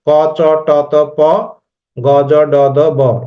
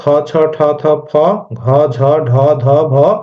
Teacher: বাতাসের প্রাবল্য বেশি থাকে, চাপ বেশি থাকে, সেটা হয় আমার আহ মহাপ্রাণ। আর যেটাতে বাতাসের প্রাবল্য কম থাকে সেটাকে বলা হয় অল্প প্রাণ। তাহলে এটা আমরা দেখতে পাচ্ছি যে ক উচ্চারণে আমার প্রাবল্য নাই, খতে আছে, তাহলে এটা মহাপ্রাণ।